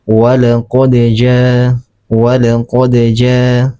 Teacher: dikatakan qalqalah sugra karena dal ini dia berada di tengah kalimat bukan di akhir kalimat. Kalau di akhir kalimat baru qalqala kubra.